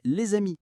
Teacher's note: Et on fait la liaison dans « les amis ».